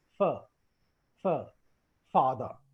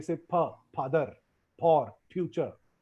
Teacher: a lot of non-native Indians and Gujaratis sometimes speak fur with two lips. They say pa, padar, por, future. · fir is spoken with lower lip and upper teeth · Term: labiodental sound